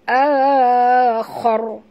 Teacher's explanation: kha ra ini bila dia mati kita kena baca tebal